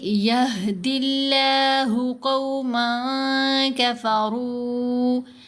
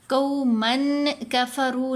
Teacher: قومن کفروا نہیں پڑھنا. یہاں پر یہ قاف کے اوپر زبر، ساتھ واو ساکن، یہ واو لین ہے.